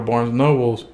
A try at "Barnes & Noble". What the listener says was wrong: Is it Nobles or Noble? It's Noble, I think, right? I catch myself trying to do that all the time. It's so hard not to say Nobles.